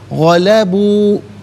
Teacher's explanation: واو مدہ ہے، اس سے ایک الف کی مقدار کھینچ کر پڑھا جائے گا